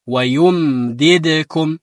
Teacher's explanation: ሚም ሳኪን በሚሆንበት ሰዓት የተወሰነ ያዝ ትንሽ ሳይበዛ በከንፈራችሁ ያዝ አድርጉት።